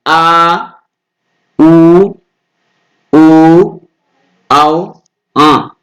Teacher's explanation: ऐसा लग रहा है जीभ के पिछले भाग से हमें आवाज सुनाई देती है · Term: पश्च स्वर